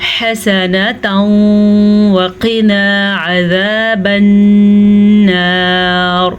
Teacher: अभी जो थोड़ी देर पहले हमने पढ़ा था वो नून साकिन के बाद था। यहाँ पे तनवीन के बाद वाव आया हुआ है तो हम इन दोनों को आपस में गुन्ने के साथ मिला के पढ़ेंगे। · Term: इदगाम बिलगुन्ना